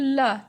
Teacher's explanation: उच्चारण करते समय हमारी जीभ का अग्रभाग मसूड़े को स्पर्श करता है जिससे प्राणवायु का मार्ग अवरुद्ध हो जाता है। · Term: पार्श्विक